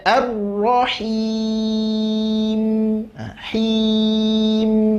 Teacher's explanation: Mim juga sifat tawasud, nggak boleh dipotong langsung habis, tidak. Sedikit ngalirkan huruf mimnya.